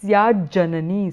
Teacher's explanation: there is a vyanjana sandhi here where it is syat plus ja becomes syajja. There is a doubling of the ja there